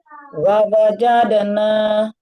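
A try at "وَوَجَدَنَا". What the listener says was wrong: Kurang monyongnya. Wa-nya dimajukan dulu. Wa.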